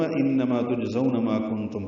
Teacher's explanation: انما نون مشدد پہ غنہ ہے، آواز ناک کے بعد سے لے جا کر 2 حرکات تک ٹھہرائیں گے